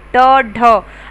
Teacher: आगे देखिए उत्तेक्षिप्त व्यंजन, ऐसे व्यंजन जिन्हें बोलते समय जिह्वा की नोक ऊपर उठकर मुड़कर तालू को लगती है तथा फिर झटके से पीछे हट जाती है, उत्क्षेपित व्यंजन कहलाते हैं।